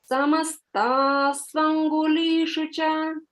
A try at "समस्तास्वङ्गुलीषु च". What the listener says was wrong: a little more holding on that swa समस्तास्वङ्गुलीषु च